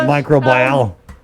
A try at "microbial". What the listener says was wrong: you say micro and bile, people think you have a stomach ailment.